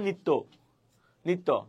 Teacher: ওই জ ফলার যুক্ত যে বর্ণটা আছে সেটা দুইবার উচ্চারিত হবে